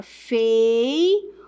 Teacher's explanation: Então, se eu falo aqui, ó, vou separar a palavra feiura. Veja que o U é forte, então é uma paroxítona